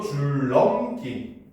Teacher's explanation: 니은은 리을의 앞이나 뒤에서 리을로 발음을 하는 겁니다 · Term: 유마